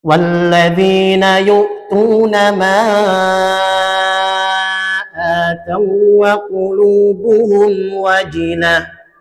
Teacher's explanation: Wau sukun bertemu dengan wau. Maka tidak ada kewajiban untuk meng ghunahkan.